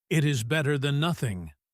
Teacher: The stress is on better.